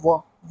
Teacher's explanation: दंतोष्ठ है आपका व जो है वो दंतोष्ठ है